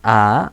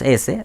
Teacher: Por ejemplo, todas las vocales son sonoras y si decimos A, vamos a ver que las cuerdas vocales vibran. Y si decimos S, vamos a ver que las cuerdas vocales no vibran.